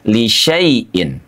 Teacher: Karena sifrul atau tanda bulat itu menggambarkan bahwa alifnya dianggap zero, kosong, tidak ada. Jadi dari huruf shin langsung terus masuk ke huruf ya.